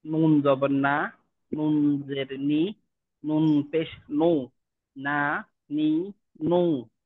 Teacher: জিহ্বার আগা তার বরাবর উপরে তালুর সঙ্গে লাগাই উচ্চারিত হয়।